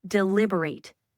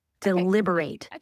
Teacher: Put the emphasis on the second syllable.